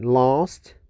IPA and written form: lɑːst (last)